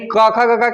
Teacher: भी अंग तक और जो विसर्ग है और अ आ है इनका उच्चारण जो है कंठ से होता है